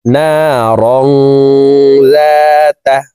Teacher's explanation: ما أغنى عنه ماله وما كسب سين زبر سا يا صاد زبر يص لام كرا زبر لا سيص لا نون ألف زبر نا را ألف দুই زبر রং ইকফাহ গুন্না তানউইনের পরে ইকফার 15টি হরফের ভিতরে একটি হরফ জাল আসছে এই কারণে এই তানউইন ওয়ালা রটি নাকের ভিতরে লুকাইয়া গুন্নার সহিত পড়ব